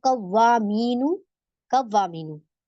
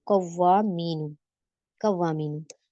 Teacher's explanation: वाव मुशद्दद आए या मुशद्दद आए, वो वाव और या मुशद्दद को ही हमने ऊंचा करना है उसकी आवाज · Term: नब्र